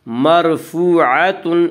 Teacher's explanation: مرفوعاتن، واو مدہ وہ جو ساکن ہو اس سے پہلے پیش ہو، واو مدہ کو ایک الف کے برابر کھینچ کر پڑھیں گے۔